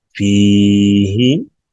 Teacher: کیونکہ اس میں یا مدہ ہے، اس لیے فا کو لمبا کیا گیا